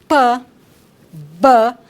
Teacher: Então, o primeiro tipo, né, de modo de articulação são as consoantes oclusivas, que são as consoantes cuja produção é feita com um bloqueio total da passagem do ar pela boca. Então, o ar, ele não vai sair pela cavidade oral de forma livre, não vai ter uma passagem livre, né?